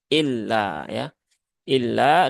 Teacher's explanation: lam bertasdid itu ditahannya jangan ee terlalu lama